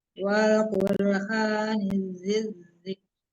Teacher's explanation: Langsung ditasdidkan ke zal ya, enggak ada lam dibaca di situ.